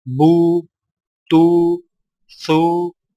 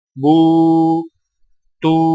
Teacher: سامعین کرام، آپ پڑھ چکے ہیں کہ سیدھی پیش اور الٹی پیش دونوں حرف کے اوپر ہوتی ہیں، لیکن دونوں میں فرق یہ ہے کہ سیدھی پیش کو ہونٹوں کو گول کر کے بغیر کھینچے اور جھٹکا دیے پڑھا جاتا ہے